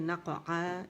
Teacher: نق آ کی آواز نہیں آئے گی کیونکہ یہ حمزہ نہیں ہے, عین کی آواز ہے, عین ادا کریں گے نق آ, ٹھیک ہے.